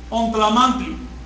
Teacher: Dejar la nasal paladial, no labial. Porque tlamantli lo haces en el paladar, no lo haces en los labios.